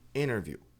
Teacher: a tônica é in. Então, a gente pode não pronunciar o T